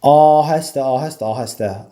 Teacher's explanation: Ahəstə sözündə A-da uzanma vardı.